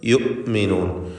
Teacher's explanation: യുഅ്മിനൂൻ ഹംസ ഷിദ്ദത്തിൻ്റെ ഹർഫാണ്, വ്യക്തമാക്കി ഹംസ ഉച്ചരിക്കണം. അത് യുഅ്മിനൂൻ എന്ന വ്യക്തമായി പോകരുത്.